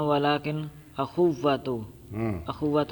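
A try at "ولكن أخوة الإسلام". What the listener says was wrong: ولیکن ولیکن آپ نے کیوں زبر پڑی ہے؟ اس لیے تو میں بار بار دہرا رہا ہوں، ولیکن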